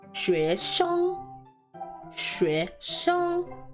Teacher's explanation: We're using the second tone, so 学生 学生. And again, 生 uses the first tone, so not light neutral tone, but flat first tone.